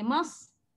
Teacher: mas sad sakinah dibaca secara safir dan juga hamas.